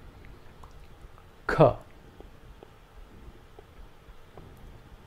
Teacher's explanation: This is an aspirated consonant, and the air pressure behind the tongue is released with a little force along with the sound.